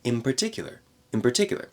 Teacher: in very fast speech, just like in Boston, in particular, that N turns into an M.